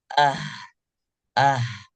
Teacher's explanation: adapun dalam kondisi sukun pita suaranya juga masih tetap terbuka bacanya ah ah tidak boleh ditahan kalau ditahan maka tidak akan